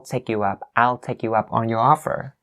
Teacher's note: So up on sounds like one word, and then your offer.